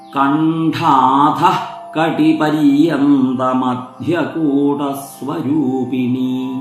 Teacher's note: മൂന്ന് നാമങ്ങളും മുറിക്കാതെ തന്നെ ചൊല്ലേണ്ടതാണ് ഇടയിൽ വെച്ച് മുറിക്കരുത് ഇവിടെ ഒരു വിസർഗ്ഗം കണ്ടാഥ എന്ന് കഴിഞ്ഞു വരുന്നതുകൊണ്ട് അവിടെ ആ വിസർഗം കൂടി കേൾക്കപ്പെടുന്ന വിധത്തിൽ വേണം ആ നാമം ഉച്ചരിക്കാൻ